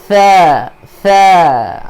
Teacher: Keluarkan hujung lidah kita di antara gigi gunting. · Jangan sa, jangan bunyi sin. Bunyi huruf tha di sini.